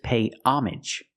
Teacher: pay homage where the H is silent and the AG is pronounced normally like message and package homage you pay homage to someone it's like a tribute a